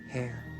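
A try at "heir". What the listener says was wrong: You don't even pronounce the H.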